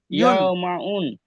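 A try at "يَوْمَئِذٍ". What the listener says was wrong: উন হবে না হবে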